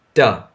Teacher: In this case, as you can feel in your mouth, your tongue is going up, ta, and it's touching the alveolar ridge. There is a curve just behind your teeth line, upper teeth.